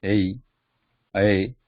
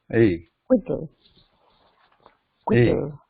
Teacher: A, there is no short version of A. When we say A, it automatically becomes long by nature because it is a mix of two short vowels